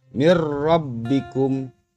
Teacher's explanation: Nun mati bertemu dengan salah satu huruf idgham bila guna berupa ro, maka cara membacanya bunyi n pada nun mati harus dimasukkan ke dalam huruf ro dan tanpa disertai dengan berdengung